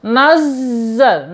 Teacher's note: Kemudian lanjut nazzalna, nazzalna ya, awas hati-hati ya, di situ ada huruf zai. Huruf zai bertasydid, tidak boleh tertahan ya, suaranya udaranya tidak boleh tertahan.